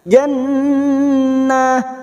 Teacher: nun yang bertasdid gunnah musaddadah. Kita dengungkan selama 3 harokat